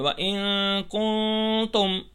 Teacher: جیسے چلیں پہلے اخفا سمجھ لیتے ہیں، جیسے وَإِن كُنتُم، یعنی نون کی آواز ناک میں چھپا کے پڑھنی ہے